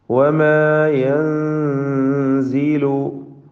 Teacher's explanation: സാക്കിന നൂനിനെ ഇഖ്ഫാ ഹഖീഖി നൽകി മണിച്ചുകൊണ്ട് അവ്യക്തമാക്കി ഉച്ചരിക്കണം, മറച്ചു മണിക്കണം.